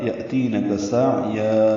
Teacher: यअतीनक हमज़ा साकिन झटके से, ती या मद्दा काफ बारीक अदा करेंगे। सा या आइन वस्ते हलक से निकालेंगे